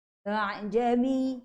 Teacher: A'jami, tak baca dengan ha juga, dia tengah-tengah antara hamzah dan juga alif. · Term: bacaan tashil